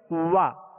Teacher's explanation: واو کا جو مخرج ہے پہلے اس کو مخرج سے ادا کریں گے. واو دونوں ہونٹوں کی گولائی سے ادا ہوتی ہے. وا اب زبر ادا ہوئی.